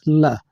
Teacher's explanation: ल वर्ण पार्श्विक कहलाता है